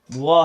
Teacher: दांत और ओष्ठ, दांत और हमारे होठ के प्रयोग से जो अक्षर बोले जाते हैं वो व है। व बोलते समय हमारा दांत और ओठ दोनों सम्मिलित होता है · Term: दंतोष्ठ